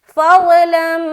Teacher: यहाँ पर हम इदगाम नाकिस कर रहे हैं, यानी कि गुन्ने के साथ इदगाम करेंगे